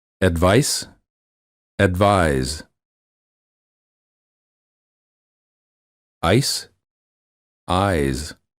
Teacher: the first word of the pair ends with the voiceless consonant and the second with the voiced one notice the difference in vowel length